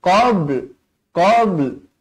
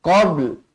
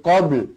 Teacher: qabl ada lam di hujungnya pastikan ada bunyinya